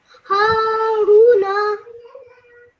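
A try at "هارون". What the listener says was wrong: Just make sure you stretch the Ru sound out for 2 seconds because of the Waw Madda.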